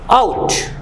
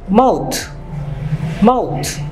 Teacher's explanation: এখানে দুটো সাউন্ড লক্ষ্য করুন, দুটো ভাওয়াল সাউন্ড আ এবং উ, এই দুটো মিলে হচ্ছে আউ। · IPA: /aʊ/